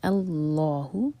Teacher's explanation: لام جلالہ ہیوی اور لا 2 حرکہ لمبا